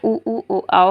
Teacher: वृत्तमुखी इन स्वरों का उच्चारण करने में ओष्ठ की आकृति गोलाकार होते हैं